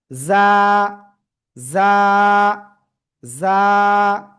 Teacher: জিহ্বার আগা, সামনের নিচের 2 দাঁতের পেট ও আগার সাথে লাগাবো, লাগিয়ে ঝিঝি পোকা বাগানে যেমন ডাকে জ্জ, এরকম আওয়াজ হয়, তো এরকম একটু আওয়াজ করে আমরা এক আলিফটা নিয়ে উচ্চারণ করব।